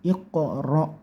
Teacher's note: bunyikan mantul ya, memantul atau mendal karena ini qalqalah sughra. Mantulnya bukan bukan ke tapi ko.